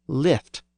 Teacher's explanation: When the Y and I sounds merged in the north and east, it became lift.